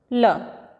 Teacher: पार्श्विक व्यंजन जिसके उच्चारण में हवा जीभ के पार्श्व या बगल से निकल जाए